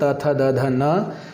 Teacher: आपकी जिह्वा आपके दांतों का स्पर्श जरूर करेगी। बिना दांतों का स्पर्श किए जिह्वा इन वर्णों का उच्चारण नहीं कर सकती है।